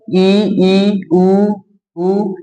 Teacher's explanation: मुख लगभग बंद रहता है, अब उतना भी बंद नहीं रहता है, हवा निकलने के लिए जगह चाहिए, हवा नहीं निकलेगा तो उच्चारण कैसे होगा। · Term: संवृत